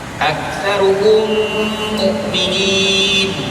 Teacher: maka wajib dibunyikan secara Idgham dan dibaca dengan dengu ya juga dengan kadar dua harakat ya aksaruhum mukminin mim mati bertemu dengan Mim dan mim ini